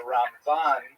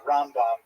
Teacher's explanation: we say Ramban uh with the accent on the last syllable and Rambam the accent on the first syllable